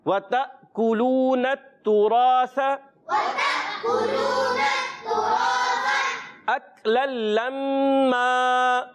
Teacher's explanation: اس کے بعد را ہے، را کو پر کریں گے کیونکہ اس پر زبر ہے اور ایک الف کھینچ کر بھی ادا کریں گے. آخر میں سا ہے، سا کی ادائیگی کلیئر ہونی چاہیے، سین سے نہیں بدلنا چاہیے. · آخر میں سا ہے، سا کی ادائیگی کلیئر ہونی چاہیے، سین سے نہیں بدلنا چاہیے. وَتَأْكُلُونَ التُّرَاثَ أَكْلًا لَمًّا.